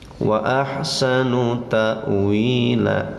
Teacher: Nah, lalu idghamkan karena tanwin bertemu waw dinamakan idgham. Nama idghamnya adalah idgham biguna, bacanya pakai dengung. Tahan, tekan lalu dengungkan ya.